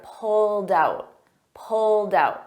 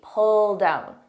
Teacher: Notice it ends in a soft D, but because I have a vowel, I combine those together.